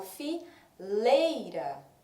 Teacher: Quando eu falo fileira, a letra E tem um som mais forte, então ela é a nossa vogal. O I tem um som mais fraco, então é chamado de semivogal.